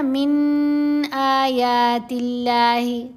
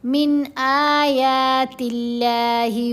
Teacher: یہاں فی بیوتکن من آیات اللہ، نون ساکن کے بعد حمزہ ہے، حمزہ حروف حلقی میں سے ہے، یہاں ہم اظہار کریں گے